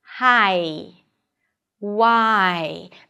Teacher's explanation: Here you drop your jaw for an ah sound, that's a front vowel, and then your tongue rolls up and moves forward for the e. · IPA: /aɪ/